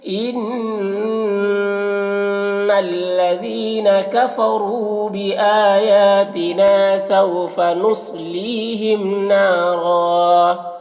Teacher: ایک زبر کے ساتھ الف پڑھیں گے اور را کو پر پڑھیں گے